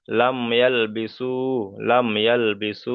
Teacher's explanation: মিম সাকিনটাকে বিনা গণ্যায় পড়তে হবে, বিনা গণ্যায় জাহির করে পড়তে হবে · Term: ইজহারে সাফাবি